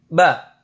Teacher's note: ketika kita ucapkan maka tidak boleh ada nafas yang keluar dari mulut kita